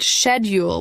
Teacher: Americans pronounce it schedule with a hard k sound at the beginning. British speakers pronounce it schedule with a soft shh sound. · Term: soft sh sound